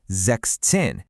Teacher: Notice how it drops the s from sex.